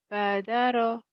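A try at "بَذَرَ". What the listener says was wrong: Nah, titiknya di atas. Kenapa ini badara? Padahal ini kan sama, ini nun tuh.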